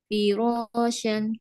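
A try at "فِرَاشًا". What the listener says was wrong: Masya Allah, Alhamdulillah.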